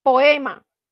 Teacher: En poema, tenemos, si nosotros separamos la palabra, la sílaba queda separada, es decir, las dos vocales quedan separadas, pero se forma el hiato al tener nuestras dos vocales abiertas juntas en la palabra